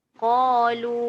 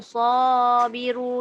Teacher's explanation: Alif yang ditebalkan kerana mengikut huruf isti'la sebelumnya. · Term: alif mufakhamah